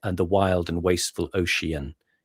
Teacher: You make ocean three syllables effectively because of the way it scans and the the expanse of the word then gives it more power in the speech as well.